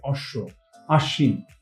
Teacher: শেষে ব ফলা যেটা থাকে সেটা কিন্তু আমাদের অনুচ্চারিত থাকে কিন্তু আশ্রয়ী যে ব্যঞ্জনটা থাকে সেটা হচ্ছে দুইবার উচ্চারণ হয় · শব্দের মধ্যে বা শেষে ব ফলা যেটা থাকে সেটা কিন্তু আমাদের অনুচ্চারিত থাকে